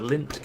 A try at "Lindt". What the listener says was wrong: I think you pronounce it Lind. No, Lind. Like it's like just a hint of a T at the end.